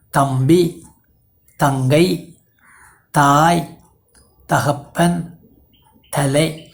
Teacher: இது ஒலிப்பிலா பல் அடைப்பொலி, dental voiceless stop. இந்த ஒலி மொழி முதலிலும் சொல்லின் இடையில் இரட்டிக்கும் பொழுதும் ஒலிக்கு முன்னும் இக்கொலிக்கு பின்னும் வரும்.